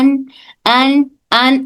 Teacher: नून की आवाज हल्की से निकलती है नाक में, लेकिन अगर गुन्ना हो तो ज्यादा नाक का ही रोल होता है · नून बोलकर महसूस करें कि आवाज सिर्फ मुंह से नहीं बल्कि नाक से भी आ रही है। अगर नाक से आ रही है तो दुरुस्त, अदरवाइज फिर हमसे गलती हो रही है।